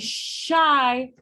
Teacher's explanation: produced with your tongue approximating the post-alveolar region but it's not touching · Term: fricative